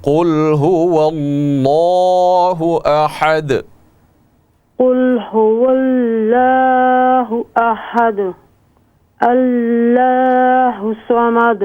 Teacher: یہ دونوں جگہ پہ یہ لفظ اللہ کا جو لام ہے اس کو آپ موٹا کر کے پڑھیں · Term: لام کو موٹا